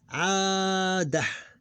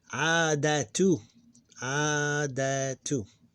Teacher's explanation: With sukoon, because this is dot here. We don't pronounce it as T, we pronounce it as H or he, ha, hu, he, and of course the short vowel is ignored.